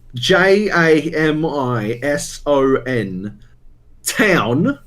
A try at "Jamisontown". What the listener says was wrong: Listen, it's not town. Jamiston. Yeah, but they got no teeth over there, and so they just fucking cut the end off, and so it's just Jamiston.